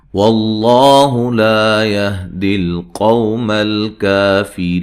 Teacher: لفظ اللہ کو موٹا ادا کرنا ہے، اس سے پہلے حرف پر زبر ہے